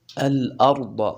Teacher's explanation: را دا ډکه ویل کیږي ځکه را ساکنه ده مخکې حرف باندې زبر دی. ضاد هم ډک ویل کیږي ځکه د غټو حرفونو نه دی.